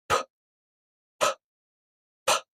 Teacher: you make a sudden release of the air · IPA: [p]